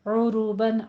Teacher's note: آئین کو وسط حلق سے ادا کریں اور را کے پر ضمہ ہے، پر پڑھنا ہے